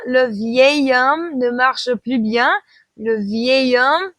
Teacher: I know it starts with an H, but it's silent in French, so we're still going to use that extra form that we have for beau, nouveau, and vieux.